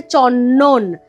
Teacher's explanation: নয়ের প্রভাবে দটা ন হয়ে যাচ্ছে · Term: প্রগত